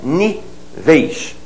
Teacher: Nível é paroxítona terminada em L, você faz níveis com ditongo fechado, já que a sílaba tônica está ali, né?